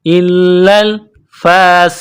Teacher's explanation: حمزہ کو لام کے ساتھ ملانا ہے لام میں سختی کرنی ہے لام کو دبانا ہے الا الفاسقون کڑا زبر ہے ایک الف کے لمٹ میں کھینچنا